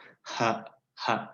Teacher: Faringal. Bunyi yang tembus saja langsung tanpa ada halangan. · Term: bunyi faringal